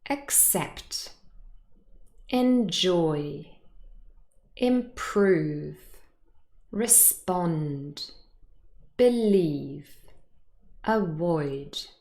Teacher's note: hopefully you were able to hear that the second syllable is stressed here, not the first.